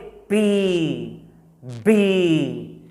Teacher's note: do you feel that puff of air hitting your palm